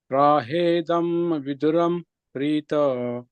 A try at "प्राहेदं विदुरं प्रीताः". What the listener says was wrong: Extend it a bit more. There are two dots. Prahedam Viduram